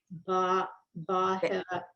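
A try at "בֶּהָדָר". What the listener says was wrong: Be. It's a be. No, that's beha. That's a dalit. Behadar. The resh and the dalit.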